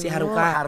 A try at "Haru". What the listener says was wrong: enggak pakai K, Haru.